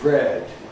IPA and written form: bred (bread)